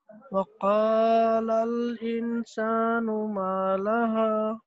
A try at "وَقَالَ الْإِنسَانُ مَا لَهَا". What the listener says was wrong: انسانوں پہ تھوڑا سا غنہ کرنا ہے.